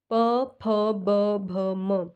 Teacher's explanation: दोनों ओंठ क्या है, आपस में टच हो रहे हैं ना, एक दूसरे को छू रहे हैं। तो जो प वर्ग है उसका उच्चारण स्थान होगा होंठ।